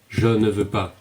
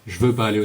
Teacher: Je ne veux pas aller au cinéma generally will become je veux pas instead of je ne veux pas.